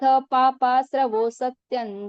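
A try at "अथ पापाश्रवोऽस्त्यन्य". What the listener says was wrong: ठीक है, सत्य नहीं है, स्तन्य, यो पे रुकना। अथ पापाश्रवोस्त्यन्य।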